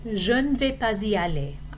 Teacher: there is a liaison between the S of pas and the pronoun I, because I is a vowel sound.